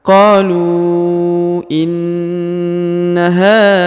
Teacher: huruf na atau nun sukun atau na ditahan dan ditekan karena di sini ada terdapat tanda tasdid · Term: tanda penekanan